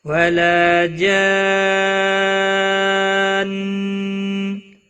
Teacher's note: لا الف مدہ ہے، 1 الف کے برابر کھینچ کر پڑھیں گے۔ جان، بڑی مد ہے، مد لازم، جب بھی حروف مد کے بعد مشدد یا ساکن حرف آتا ہے تو وہاں پر مد لازم لگتی ہے، 5 الف کے برابر کھینچ کر پڑھیں گے، اور وقف کی صورت میں نون پر گنہ کے ساتھ وقف ہوگا۔